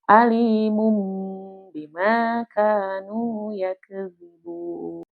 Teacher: Nah, di situ itu artinya tanwinnya harus dihilangkan dan diganti dengan huruf dengan suara mim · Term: iklab